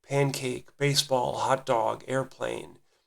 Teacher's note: Speech recognition thresholds utilize two-syllable equal stress words called spondees or spondaic words. So again, they're two-syllable, equal stress on each syllable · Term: spondic words